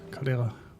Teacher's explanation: But the emphasis is on the second syllable, I think.